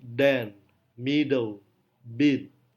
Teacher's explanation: D adalah voiced alveolar plosive.